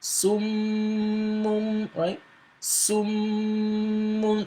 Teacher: you see the Ghunna is pronounced with your khayshum